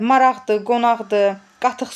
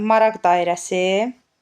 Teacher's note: bu tipli sözlərin sonunda işlənən q samiti adi vəziyyətdə x kimi tələffüz olunur.